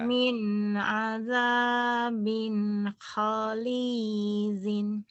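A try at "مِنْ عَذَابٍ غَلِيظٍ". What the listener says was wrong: Itu go, bukan ho. Golid. Min azabin ghalidhin.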